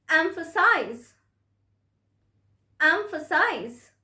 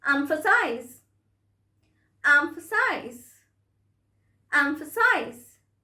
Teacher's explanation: The stress is on the first syllable, the first syllable, emphasize, right? So the size can give you a wrong notion that the stress is on S syllable, but no, it's not like that.